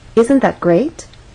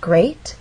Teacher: have one syllable to make our voice Glide up great and we're using Rising intonation because this question requires a yes or no answer by asking isn't that great we expect our listener to agree